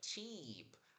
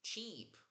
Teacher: Abre a boca lateralmente, aperta a língua contra o céu da boca para aquele som bem longo de i.